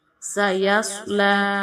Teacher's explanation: صاد کو ہم موٹا پڑھیں گے